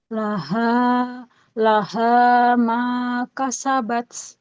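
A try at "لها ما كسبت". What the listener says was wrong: Oke, jadi huruf taknya jangan sampai hilang sifat hams atau mengalir suara, mengalir nafasnya.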